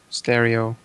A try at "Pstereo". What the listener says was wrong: If they got a P in their name, you pronounce the P.